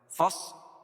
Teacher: یہ حروف مستعلیہ میں سے ہے تو یہاں صاد کو موٹا پڑھیں گے